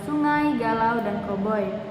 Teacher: kita dapat merasakan perubahan warna bunyi. A pada kata sungai dan galau ke arah bunyi semivokal Y dan W, dan perubahan warna bunyi O ke arah semivokal Y pada kata koboi. Dalam penyukuan dan penggalan kata, diftong merupakan satu kesatuan yang tidak boleh dipisah.